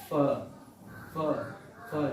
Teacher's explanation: जब इस फ को बोलते हैं, मीन्स जिसकी इंग्लिश एफ होती है, जब इस फ को बोलते हैं तो लिप्स जो है, नीचे के लिप्स वो ऊपर के दांत से टच करते हैं, जैसे फ, फ, फ, नीचे के लिप्स ऊपर के दांत से टच करते हैं फ।